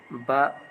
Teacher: ओष अल्प प्राण घोष वर्ण है